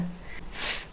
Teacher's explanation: f is unvoiced no vibration from your vocal cords